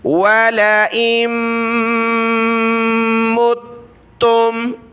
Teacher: میم کے اوپر تشدید ہے تو ناک میں آواز پیدا کی یعنی غنہ کیا، اور تا کے اوپر تشدید ہے تو تا کو سخت کیا اور جما کر پڑھا، میم تا پیش مت، تا میم پیش تم، متم۔